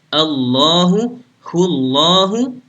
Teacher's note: lafadz Allah itu kalau sebelumnya berharokat fathah ataupun dhammah itu dibaca tebal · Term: lafadz Allah yang tebal